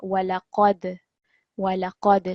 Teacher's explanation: There was a qalqala on the dal sakin over here, but also remember that we want to make the qaf a bit thicker because it's a thick letter.